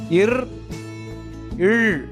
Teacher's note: இவ்விரு மெய்யெழுத்துக்களும் மேல்வாயை நாக்கின் நுனி வருவதால் பிறக்கின்றன